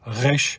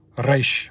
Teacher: pronounced in the back of the throat, resh, and then pronounced more from the upper part of the top of the mouth, like a trill in Spanish, like resh, where you roll your R, resh.